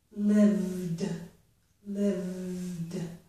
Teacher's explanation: Although I have written a vowel letter, the letter E, in between the letters V and D, we don't pronounce that E. So the last sounds in this word are V and D. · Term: consonant clusters